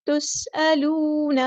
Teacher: واو مد آیا تو مد اصلی ہوگی، یہاں پر ایک الف کے برابر لمبا کریں گے